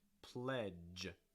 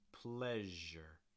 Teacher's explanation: both of these sounds are voiced so make sure your throat's vibrating